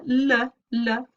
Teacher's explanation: the tip of the tongue the blade of the tongue is on the alveolar ridge but it's got one or both sides lowered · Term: lateral approximants